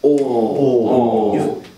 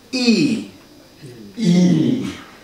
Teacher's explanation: The tip is similar, still down behind bottom teeth. But the center part of the tongue moves from O to E. Now it's high.